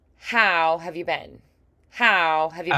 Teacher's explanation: Have you as one soft blob and then been clear but short.